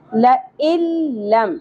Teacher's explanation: آپ ایسے سمجھ لیجئے کہ حمزہ کی زیر ڈائریکٹلی لام کے ساتھ جڑ رہی ہے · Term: ادغام